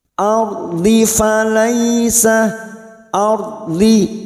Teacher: Ardi, huruf dhad lagi yang berharokat kasroh, pinggir lidah nempel pada gigi geraham atas, boleh kiri boleh kanan.